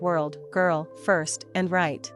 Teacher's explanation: But in English, the tongue pulls back slightly in the mouth without touching the roof, and the lips round just a bit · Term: English R